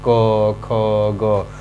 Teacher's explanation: क वर्ग को हम लोग कंठ से बोलते हैं। जब हम बोलना शुरू करेंगे तो ये जो कंठ है ऊपर नीचे होगा, आप बोलकर चेक कर सकते हैं, क, ख, ग।